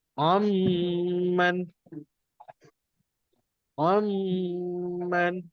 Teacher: Maknanya kita masukkan bunyi N tu, masukkan bunyi N tu dalam huruf mim. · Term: masuk dan dengung